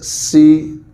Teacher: جب سین کو ادا کیا جاتا ہے تو اس کو سیٹی کے ساتھ ادا کیا جاتا ہے، جیسے سی ایسے آواز ہوتی ہے۔